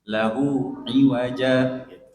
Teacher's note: Kalau kita panjangkan, ya, seharusnya itu di situ huruf hamzah. Di sini huruf ain, jadi tidak panjang